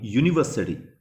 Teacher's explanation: the word begins with you which is a vowel but the first sound that comes out is ye